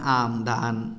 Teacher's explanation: যেসব ব্যঞ্জন উচ্চারণের সময় বাতাস কেবল নাক দিয়ে বের হয় ঠিক আছে সেগুলোকে নাসিক্য ব্যঞ্জন বলে যেটা শুধু নাক দিয়ে বের